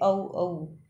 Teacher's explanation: कंठ यानी कंठ और होठों से बोला जाए